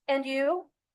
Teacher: Notice the rising intonation on and you. This shows that is interested in what Jane has to say.